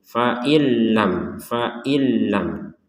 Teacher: ada yang masuk tanpa dengung